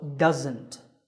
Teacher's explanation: There's a z sound there. It's not an s sound